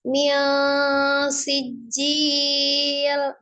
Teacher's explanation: Nun sukun ketemu dengan sinnya ikhfa ya. Ikhfanya yang tengah-tengah. Mil sijil mendekati huruf sin ya. Tidak nun, tidak eng, tidak n, tidak eng ya.